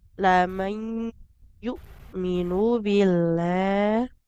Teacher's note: Hamzanya tekan. Betul-betul aliran suaranya tertahan. Jangan jadi muqain.